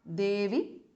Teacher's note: E is short there because of Sambodhana.